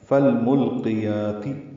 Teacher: یا کو 2 حرکات لمبا کریں گے اور تا کی زیر کو معروف طریقے سے جلدی ادا کریں گے۔